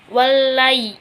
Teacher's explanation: dengan huruf asyamsiyah yaitu lam dan karena ada tasdidnya juga nah dibacanya itu dengan cara mengidghamkan langsung kepada lamnya jadi si alnya itu enggak disebutkan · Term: alif lam syamsiah